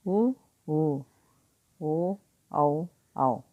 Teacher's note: Okay, next ఓష్ట ఆకృతికి ఆధార పర్. వృత్తముఖి అంటే గోల్, మన లిప్స్ రౌండ్గా అవుతుంది